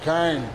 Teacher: feijão e carne com r bem puxado